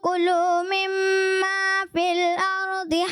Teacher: کلو میں جو ہے کاف مجھے تھوڑا سا پر ہوتا محسوس ہوا